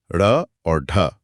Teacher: जब ढ या ढ बोलते हैं तो ऐसा लगता है जैसे जीभ पीछे जाकर झटके से आगे गिर रही है। एकदम किसी छलांग की तरह। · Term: उत्क्षिप्त व्यंजन